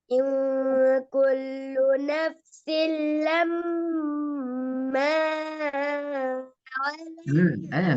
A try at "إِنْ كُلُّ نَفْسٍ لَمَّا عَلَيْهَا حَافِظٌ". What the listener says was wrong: பிழை அப்படி அளவுக்கு அதிகமாக நீட்டினாலும் பிழைதான். எல்லாத்துக்கும் ஒரு அளவி. லம்மண்டு போனா பிரச்சனை அது.